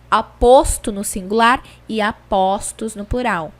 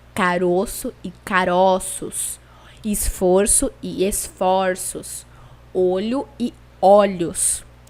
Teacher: E como vocês podem perceber, toda vez que eu flexiono o número, que eu transformo o singular em plural, eu vou também transformar a leitura, a vocalização desse O, que antes era fechado no singular e agora passou a ser aberto no plural. Essa transformação nós chamamos de metafonia. · Existem também alguns substantivos que quando a gente gera o plural, vai acontecer tanto a modificação morfológica quanto a modificação fonética. Em geral, essa mudança acontece pela transformação do O fechado pelo O aberto. Então, o que vai acontecer é uma mudança do timbre do O.